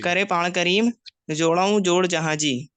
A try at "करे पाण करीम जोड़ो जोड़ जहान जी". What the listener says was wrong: जहान जी, जहान जी। जी, ये गुन्ना नहीं है, जहान जी।